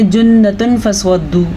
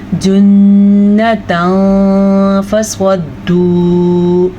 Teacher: تو یہاں پہ ہم تنوین کی آواز کو چھپا لیں گے. اسے اخفاء کا قاعدہ اسی لیے کہتے ہیں کیونکہ اس میں چھپانا ہوتا ہے.